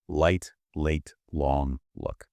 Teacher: It's all at the front. Yes, you just touch the very tip of your tongue to the top front of your mouth right behind your teeth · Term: the L sound